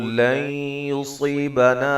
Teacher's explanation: نون ساکن کا ادغام مع الغنہ ہے